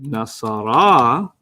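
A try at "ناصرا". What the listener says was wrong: No, you got to go longer.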